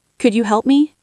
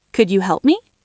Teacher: To sound truly polite when asking a favor, your voice needs to go up at the end of the sentence. This is called rising intonation. It shows you are friendly and waiting for an answer. · It sounds like an order, not a question. To sound truly polite when asking a favor, your voice needs to go up at the end of the sentence. This is called rising intonation.